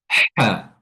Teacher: kalau yang ha tenggorokan bagian tengah dia lebih tipis dan lebih tajam · Ha adalah huruf yang keluar dari tenggorokan bagian tengah. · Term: Huruf ha, huruf ha, wasatul halqa